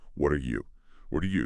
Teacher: That T in what flaps becomes a soft D, linking to R. Their R and U often blend, so you get somebody like, what are you, or what are ya? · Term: flap T